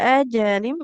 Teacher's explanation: Ini jimnya enggak boleh panjang ya. Karena di sini fathah tapi di depannya enggak ada alifnya.